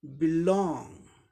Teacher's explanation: बी को साधारण तरीके से बोलेंगे, ये वर्ब है दो सिलेबल का, इसलिए सेकंड सिलेबल में स्ट्रेस है · बी का ब साउंड आएगा, ई का ई short and quick ई sound हुआ, बी एक सिलेबल बन गया।